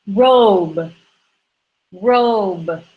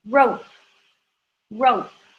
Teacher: the only difference is whether it's voiced or unvoiced